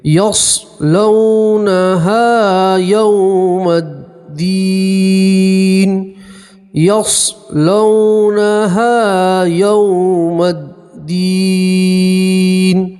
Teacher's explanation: واو لین ہے اور یہاں پر بھی واو لین ہے، اس لیے جلدی پڑھیں گے